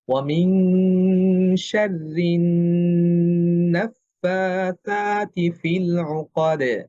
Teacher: দাল পাতলা হরফ, কলকলাটাও পাতলা হবে